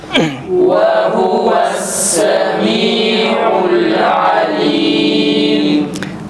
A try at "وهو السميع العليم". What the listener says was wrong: Buradaki ha'yı uzatmayalım. Zamirdeki ha ve huve. Bir de vavlar Türkçedeki ve'ye yakın çıkmasın. Kesinlikle ve'ye benzeşmesin. Ve le hu ve huve şeklinde çıkmaması gerekir. Tane tane, fakat o ha'yı uzatmamamız gerekir. Ve huve değil.